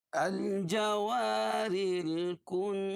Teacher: الجوار الکنس، الجوا الف مدہ، الف ساکن سے پہلے زبر ہو تو الف مدہ ہوتا، را باریک ہوگی